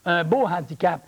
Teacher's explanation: le h il est prononcé